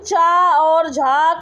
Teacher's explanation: च और झ का उच्चारण स्थान जो माना जाता है तालु